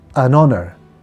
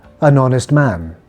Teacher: some words are spelled with the consonant H at the beginning but we don't pronounce the H